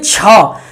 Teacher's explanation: ऐसा घर्षण होकर आती है वायु, घिस के निकलती है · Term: महाप्राण